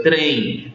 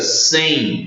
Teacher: qualquer palavrinha que o M não tem som bilabial, ele não é pronunciado como o M de Maria, por exemplo, nesse caso aí, nós temos sim um ditongo, mas um ditongo oral.